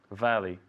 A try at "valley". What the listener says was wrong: Perfect. Very nice. Very nice valley.